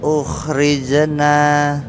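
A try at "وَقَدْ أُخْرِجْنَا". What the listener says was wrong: Ditekan dulu. Ukhrijna. Enggak rize, enggak rije. Nah, huruf J. Wa qad ukhrijna.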